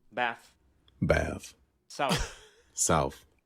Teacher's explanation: Interdental The voiceless fricatives. th sound, th, is sometimes replaced by f.